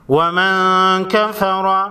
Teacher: نون ساکن کے بعد حروف اخفاء میں سے کاف ہے، اخفاء حقیقی ہوگا